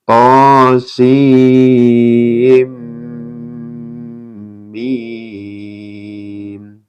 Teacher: Idgham bigunah ya, karena ada nun sukun bertemu dengan mim